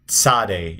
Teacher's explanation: which is a t, cats, tzade. It's a ts together